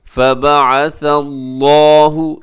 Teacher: یہاں لفظ اللہ کو موٹا رکھیے گا کیونکہ اس سے پہلے ثا کے اوپر زبر ہے۔